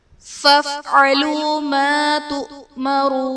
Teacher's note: تؤمرون میں حمزہ ساکنہ ہے، جھٹکا دے کر پڑھیں گے، واو ساکن سے پہلے پیش ہے، واو مدہ کا قاعدہ، اور حرف مدہ کے بعد عارضی سکون یعنی وقف کی وجہ سے ہم نون کو ساکن کریں گے تو یہاں پر مد عارض کا قاعدہ ہوگا۔